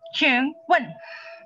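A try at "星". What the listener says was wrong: Xing, ada C-nya, Xing. Jangan sing. C dia, Xing.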